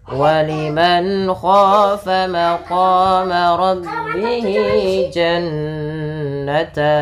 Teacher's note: ada nun sukun bertemu dengan huruf kha, maka ini ada hukum tajwid berupa bacaan izhar halqi, yaitu suara nunnya harus diperjelas dan dijelaskan suara nunnya waliman dan tidak boleh ditahan.